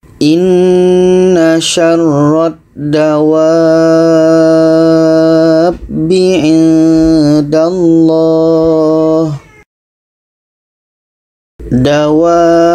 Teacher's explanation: Kita panjangkan 6 harakat, baru kita sambut dengan yang ada tasydid. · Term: mad lazim kilmi mutsaqqal